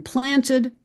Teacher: In planted, just as in fishes, the E is pronounced as that neutral schwa